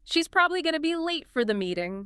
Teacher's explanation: the crucial information probably late meeting is carried clearly by those stressed words. You instantly understand the main idea. · Probably late. Meeting. Those seem to be the key ones carrying the stress.